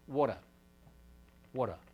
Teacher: mouth on this side as the air rushes through the mouth the tongue wanders up to near where it would be for a nice clearly articulated T then relax the air rushing through that uh constricted space creates um an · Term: tap